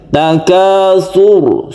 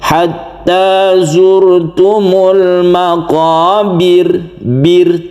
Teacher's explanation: di ayat 1 ini roknya tebal, takatsur, sur tebal roknya, tapi ayat 2 ini roknya itu dibaca tipis atau tarkik karena dia berkasroh.